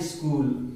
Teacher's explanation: ठीक है, और उसके पहले आधा स आ जाए, तो इसका उच्चारण करते समय हम लोग पहले क्या करेंगे, पहले ई का साउंड करेंगे, फिर उसके बाद फिर स का।